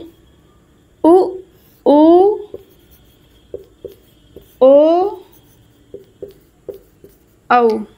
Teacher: वे स्वर जिनके उच्चारण में होठ व्रत बनाते हैं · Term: वृत्त मुखी स्वर